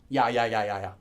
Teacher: Ya is actually a combination of the sounds E and A. So you've got E and A together make ya.